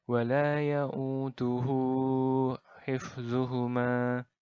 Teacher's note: ganti berada diantara dua huruf yang berbaris bukan huruf mati nah cara membacanya adalah dengan dipanjangkan dua harokat saja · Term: Mad Silah qasirah